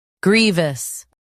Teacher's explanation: Stress gree and keep voose light. Gree V grievous stress gree and keep voose light.